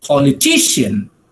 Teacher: when you say politician, right, the stress falls on the third syllable.